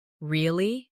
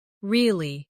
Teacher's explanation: Say really with a rising tone to show surprise. Now say really with a falling tone to show you don't believe someone.